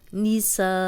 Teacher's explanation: اب سا الف مدہ تھا، آگے حمزہ آ گیا تو الف مدہ کو ہم نے 4 حرکات لمبا کرنا ہے